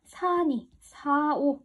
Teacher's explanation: 근데 니나 오 같은 애가 붙으니까 갑자기 이 살니, 살오가 아니라 사니, 사오 이렇게 리을이 뚝뚝 떨어져 버려요. 자, 이런 애들을 리을 탈락이다 라 그러는 거야.